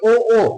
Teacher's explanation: ए, कंठ दबाते हैं तो तालु दबता है, साथ में क्या बोलेंगे ए। और अगर कंठ के साथ में होठ दबा दिए तो क्या बोलोगे ओ